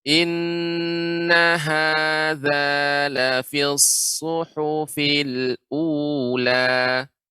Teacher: Yang benar, nanya dibaca pendek. Zanya baru dibaca 2 harokat.